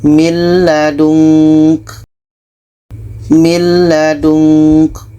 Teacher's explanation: bunyi nun masuk ke la dan tidak ada dengung